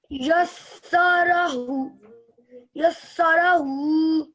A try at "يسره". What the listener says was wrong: Yeah. Yassarahu.